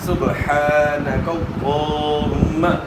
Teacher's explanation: دوسرا ہے کہ کھڑا زبر ہے. کھڑا زبر جو ہے ایک الف کی مقدار کے برابر, اس کو آپ نے کھینچنا ہے